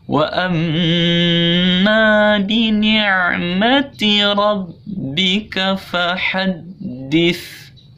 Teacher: Jadi di sini wa amma itu gunnah. Jadi mimnya mim tasdid ditahan 2 harokat. Wa amma keluar dari hidung, ma-nya 2 harokat. · itu mim tasdid cara bacanya gunnah atau berdengung ya.